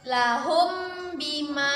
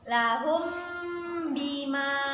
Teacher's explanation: ikhfa artinya samar-samar, maka kita baca samar-samar 2 harokat